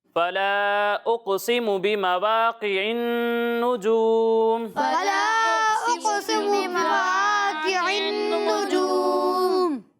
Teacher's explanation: مد منفصل ہے، اسے 2 یا پھر 2.5 الف کے برابر کھینچنا ہے